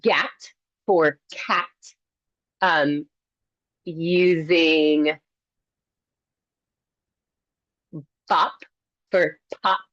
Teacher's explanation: turning on your voice on that initial consonant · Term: initial voicing